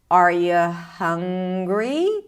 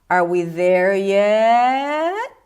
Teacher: I'm keeping my intonation rather flat until I reach the last word. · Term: rising intonation